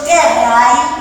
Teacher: es trisilábica, donde tenés una A larga y la I también es larga.